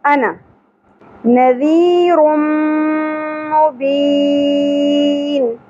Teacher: نون کے اوپر زبر ہے, زیادہ نہیں کھینچنا, ذال نرمی سے ادا ہوگا, اور یا ساکن حرف مدہ ہے, ایک الف کے برابر کھینچنا ہے